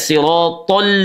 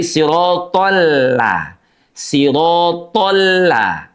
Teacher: sirat memang tebal tapi lamnya tidak. Maka tidak siratol tapi siratolla.